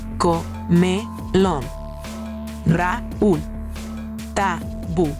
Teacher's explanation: Agudas. La fuerza de voz es mayor en la última sílaba.